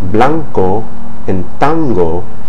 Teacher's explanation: the tongue's drawn further back into the mouth toward the pronunciation zone of those consonants, the K sound and the G sound